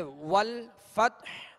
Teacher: اسی طرح آگے والفتح اب وقف کریں گے، آخر میں حا ہے، حا ساکن کریں گے، اور حا کی آواز پر جو ہے وہ سانس اور آواز دونوں توڑ دیں گے، یعنی حا کی آواز واضح ہوگی.